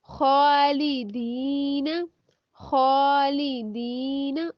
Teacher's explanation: हाँ जब हरकत की हालत में होगा, यानी ख्वा जब हरकत में होगा तो तालु के साथ टच करता है, यानी जो हमारा ऊपर तालु है ना उसके साथ टच करते हैं।